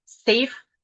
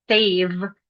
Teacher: safe, which safe is pronounced with the voiceless, versus save, which is the V, the voice equivalent.